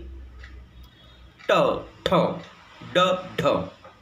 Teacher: तुमची जीभ कर्ली होऊन हार्ड पॅलेटला टच व्हायला पाहिजे, तरच ते ट ठ ड ढ हे रेट्रोफ्लेक्स प्लेस ऑफ आर्टिक्युलेशन प्रोड्यूस होतात.